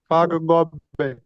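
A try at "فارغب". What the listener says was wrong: You stressed on the ba. don't stress on the ba.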